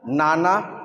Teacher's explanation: নানা জিভের ডগা আর একটু উপরের তেলের দিকে লাগাতে হচ্ছে।